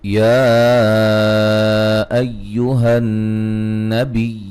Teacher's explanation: یا پہ مد جائز ہے، نون مشدد پہ غنہ ضروری ہے